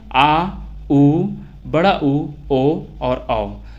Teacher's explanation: तीसरा देखें पश्च स्वर। तो पश्च स्वर जिन स्वरों का उच्चारण जीभ के पीछे के भाग से होता है उसे पश्च स्वर कहते हैं। जिसमें आ, उ, बड़ा उ, ओ और औ, तो ये जो 5 हैं वो पश्च स्वर में आता है।